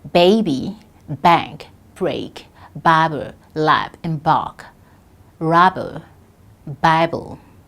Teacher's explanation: Now, we have the voiced bilabial plosive B.